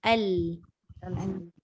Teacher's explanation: Begitu juga dengan nombor 2, idgham lam sakinah pada ra. Huruf lam, hujung lidah dekat lelangit depan